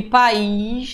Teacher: Olha o i se separando da vogal anterior. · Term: regra dos hiatos